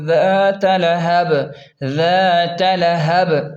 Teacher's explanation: وقف کی صورت میں با پر جو تنوین ہے اسے ساکن کریں گے، یعنی با کو ساکن کر دیں گے. وقف کی صورت میں ساکن بھی ہوگا اور با پر قلقلہ بھی ہوگا